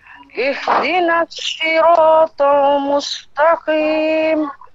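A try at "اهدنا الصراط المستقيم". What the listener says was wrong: Okey, betul. Cuma yang sad itu ihdinas sirat. Bukan sin.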